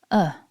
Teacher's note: syllable two is a nice short schwa